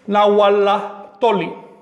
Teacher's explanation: por regla no puedo unir los sonidos LTL, sino que elimino la T